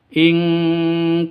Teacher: nun mati bertemu dengan Kaf samar didengungkan siap-siap ke huruf kafnya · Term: Ikhfa Hakiki